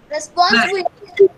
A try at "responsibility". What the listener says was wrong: Now you have to stress the B. B and then responsibility.